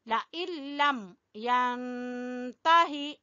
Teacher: नून नहीं पढ़ना, नून लाम में दाखिल है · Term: इदगाम बगैर गुन्ना